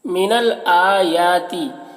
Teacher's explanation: الف حمزہ اور یا دونوں میں کھڑا زبر ہے، ایک الف کے برابر دونوں کو کھینچ کر پڑھیں گے